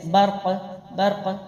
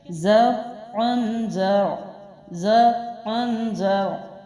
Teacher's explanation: اب یہاں پر عین جو ہے وہ بھی کنٹرول کے ساتھ پڑھنا ہے، را جو ہے وہ باؤنس نہیں کرنا، موٹا بھی کرنا ہے